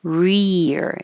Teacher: your tongue is staying in the E very high position rear it goes back for the r up for the E back for the r